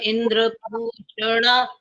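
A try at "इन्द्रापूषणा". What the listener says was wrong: इंद्र पोषणा नहीं है इंद्रा पोषणा है ये इंद्रा द्र में आ की मात्रा लगी हुई है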